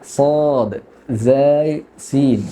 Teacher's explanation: രണ്ട് മുൻപല്ലുകളുടെ ഇടയിൽ നിന്ന് നാവ് അതിന്റെ പൂർണ്ണ സ്ഥിതിയിൽ വെച്ചിട്ടാണ് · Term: സ്വാദ് സായി സീൻ